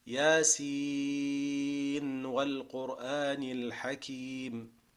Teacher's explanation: You pronounce the full letter with the full Nun and make idhar before the Waw.